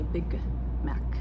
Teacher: it's very natural for me to hold the G in big. It's awkward if I say Big Mac because it's two consonants right next to each other. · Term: unreleased consonant